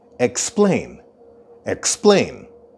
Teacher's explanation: the stress of the word explain is at the end.